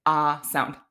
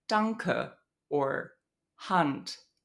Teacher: this low front unrounded vowel that occurs in both German and English